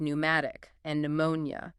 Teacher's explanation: Modern French speakers still pronounce the initial P, but English speakers abandon it.